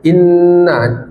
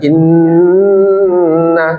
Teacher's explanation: Ya, inna ya. Inna ini ada ghunah ibu-ibu ya. Inna dilamakan inna. Jadi jangan dicepatkan.